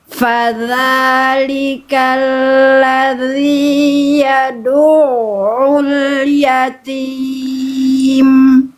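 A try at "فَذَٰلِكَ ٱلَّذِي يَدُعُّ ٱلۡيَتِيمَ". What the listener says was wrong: Bukan fadzalikal ladzi yad'u. Tapi tarik dulu, tipiskan dulu. Yad'u. Fadza. Yad'u. Ya, jangan yad'u. Ditarik lagi. Karena kan ditipiskan dulu. Ain kan tipis. Jadi dilafalkan dalam keadaan tipis ketika menyentuh ain.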